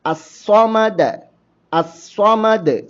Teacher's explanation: സ്വാദ് ആവട്ടെ അത് സ്വരഭാരത്തോടുകൂടി തഫ്ഹീമോടു കൂടി ഉച്ചരിക്കേണ്ട ഒരു ഹറഫും ആണ്